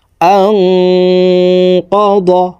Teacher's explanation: আং এখানে ইকফা গুন্না, নুন সাকিনের পরে ইকফার হরফ কফ আসছে, এই কারণে এই নুন সাকিনকে নাকের ভিতরে লুকাইয়া গুন্নার সহিত পড়তে হবে।